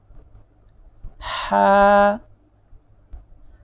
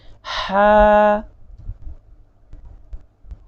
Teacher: حلق کے بالائی حصے سے آواز نکلے گی